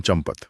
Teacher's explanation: जब हम चंपत बोलते हैं तो उस आधे म के कारण हमारे होंठ एक पल के लिए बंद हो जाते हैं। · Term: अनुनासिक ध्वनि